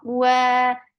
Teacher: for waw, circle your lips and then make it 2 counts long